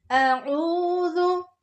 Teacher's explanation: वाव तो आ ही नहीं रहा, पर इसको मोटा करके पढ़ना है, लेकिन वाव की साउंड नहीं लानी। अऊज़ु, आइन को बिल्कुल हलक के दरमियान से निकालना है। जाल बोलते हुए नरमी से उसको अदा करेंगे।